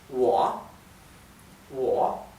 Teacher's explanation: la o con el tono baja y sube es parece que fuera con a al final